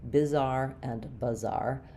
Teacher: So both have second syllable stress, bizarre and bizarre. However, because the I and the are so similar when they're unstressed, they're both reduced vowels, bizarre and bizarre, it's almost inaudible to hear the difference.